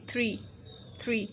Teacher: इसमें बिल्कुल clear sound आ रही है कि हमारे जो टीथ हैं they are going to touch with our tongue